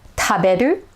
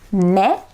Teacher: japanese e is pretty close but it's just a little brighter